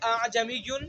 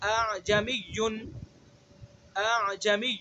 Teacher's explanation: دوسرے حمزہ کو نرمی سے پڑھنا ہے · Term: حمزہ مسہلہ